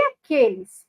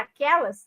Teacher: de aqueles para aquelas de novo a gente tem a mudança de uma vogal fechada Para uma vogal aberta